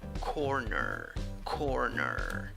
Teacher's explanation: 2 syllables. In the first syllable, you have an O sound, and in the second syllable, even though you write the word with E, the pronunciation is with schwa.